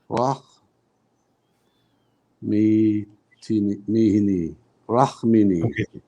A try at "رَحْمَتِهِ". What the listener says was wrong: Okay, the meme has a fatha. The fatha belongs to the meme. Rah.